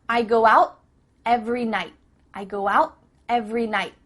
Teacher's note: tongue is at the top of your mouth you're about to make the T sound but no air goes through so it's just stopped at the top of your mouth